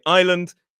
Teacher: Island has an S in it and it's silent